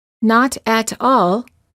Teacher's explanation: this fast D also occurs between two separate words when the first word ends with the vowel and a t